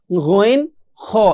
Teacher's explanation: কন্ঠনালীর শেষ হতে দুইটি হরফ সেটা হচ্ছে গইন খ একদম শেষের দিকে আসে গন খন খ এটা একদম ভিতর থেকে